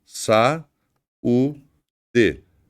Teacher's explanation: Eu tenho um iato aqui tá vendo uma separação entre o a e o u e esse U é tônico ou seja se eu tem uma separação silábica em que promova